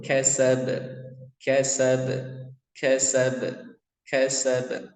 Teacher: ketika dia dibaca waqaf atau sukun, maka dia memantul.